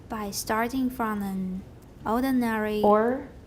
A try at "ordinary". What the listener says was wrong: I don't say airy, it's ordinary.